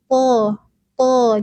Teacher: huruf th pangkal lidahnya terangkat.